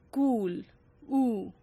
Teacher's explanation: a phoneme usually called oo, that was a long close oo, which was pronounced as we pronounce, for example, in words cool, oo, and which is also present in modern German.